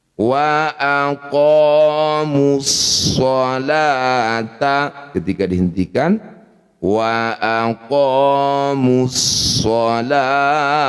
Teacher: Maka ketika dihentikan kita bunyikan ha sukun.